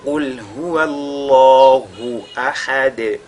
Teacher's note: Il faudra juste faire at-tafkhim lorsque vous lisez la lettre lam. · Et ahad, nous avons la lettre dal, n'est-ce pas, sur laquelle on marque la pause. Elle deviendra donc sakina du fait de cette pause-là, et on fera donc qalqala sur cette dal-là